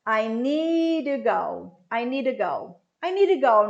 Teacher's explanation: Agora vamos falar de need to, que também esse to vai virar ru